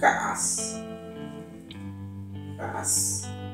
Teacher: lleva la glotal en medio de las dos a